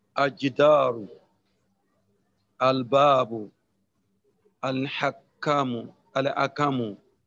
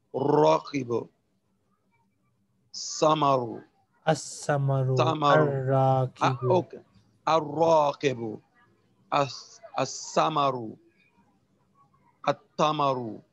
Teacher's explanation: there are certain letters before which the lam of alif lam is dropped in pronunciation. These letters are known as al-hurufu shamsiya, or the sun letters, e.g.